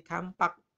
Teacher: P itu bilabial, M juga bilabial. Maka M yang paling cocok menjadi kampak.